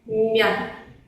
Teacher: Para pronunciar una consonante palatalizada, tenemos que recordar la posición de nuestra boca al pronunciar un sonido duro, por ejemplo el sonido ma, y después levantar un poquito la parte media de nuestra lengua hacia el paladar. Y así producimos el sonido palatalizado, blando.